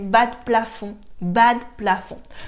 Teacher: in everyday spoken French, you can notice that I remove the “E”